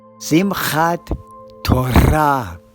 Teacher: in Sephardic Hebrew, the emphasis is on the final syllable. So it's Simchat Torah.